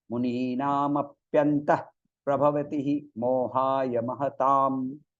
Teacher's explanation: And the visarga in the middle, it is aspirated.